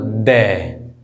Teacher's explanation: हमारी जो जीभ है वो कहाँ पे लग रही है, दांत पे